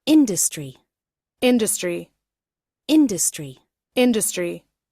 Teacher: You emphasize the first syllable.